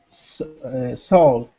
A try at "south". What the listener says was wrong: So soul. This is an ow sound. South. Might want to watch my mouth. So it's ow, ow, south. So it's like an ow sound. South. South. And watch your TH, too. When you make your TH, it's here. South. South.